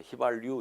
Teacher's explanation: 리을이 있지 않습니까? 그러니까 당연히 니은도 리을로 바뀝니다. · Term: 니은 첨가